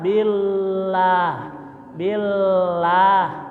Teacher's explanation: lafaz Allah sebelumnya kasrah maka lafaz Allah dibaca tipis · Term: tarkik